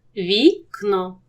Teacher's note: тут глухий кит а за ним сонорний н сонорний перетягне до себе глухий звук